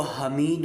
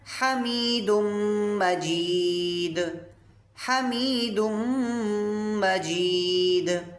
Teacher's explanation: یہ ہا ہے، حرف حلقی ہے، اس کو حلق کے درمیان سے نکالیں گے۔